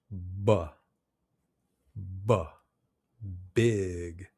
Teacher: Your mouth should be exactly in the same position as it is for the P, but the B is voiced. That means your throat vibrates. If you touch your throat while you're saying the B, you should feel the vibration. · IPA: /b/